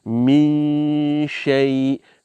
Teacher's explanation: So it merged with sheen, ash. So your mouth is preparing to pronounce the letter sheen. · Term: sukoon with a merger